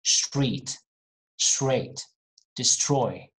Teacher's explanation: when you see str in a word, you might hear a little bit of sh.